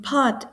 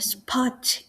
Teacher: the P in pot is aspirated but the P in a spot is not. Uh so English speakers hear both as the same sound.